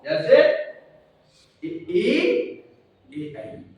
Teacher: जिनमें होंठ बिल्कुल गोल ना हो, जैसे ए, आई, इनमें होंठ गोल नहीं। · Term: अवर्तुल